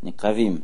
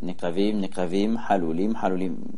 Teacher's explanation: Miléra, accent tonique à la fin du mot.